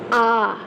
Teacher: जिस स्वर के उच्चारण में मुख सबसे अधिक खुलता है अर्थात पूरा खुलता है उसे विवत स्वर कहते हैं